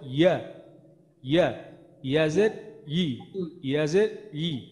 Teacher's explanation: জিব্বার মাঝখান তার বরাবর উপরে তালুতে লাগবে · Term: ইয়ার মাখরাজটা